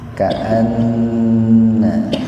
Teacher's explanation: jadi nunnya dibaca mendengung, tahan dua ketukan. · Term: gunna